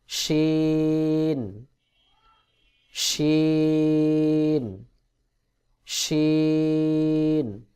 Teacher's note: জিহ্বার মধ্যখান তার বরাবর উপরের তালুর সঙ্গে লাগাইয়া শিন উচ্চারণ হয়